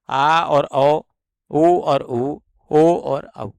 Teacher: इन स्वरों का उच्चारण जो है वह जिभ्या के पीछे वाले भाग से किया जाता है। हमारे जो जिभ्या है वह मुख के पीछे वाले हिस्से में रहती है जब इनका उच्चारण होता है। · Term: पश्च स्वर